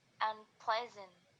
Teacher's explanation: Jadi stresnya tetap di ple-nya.